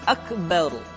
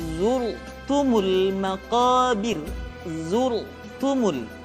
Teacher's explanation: huruf ro mesti dibaca tafkhim atau dibaca dengan suara yang tebal ketika dia berharakat fathah atau berharakat damah kemudian ra sukun didahului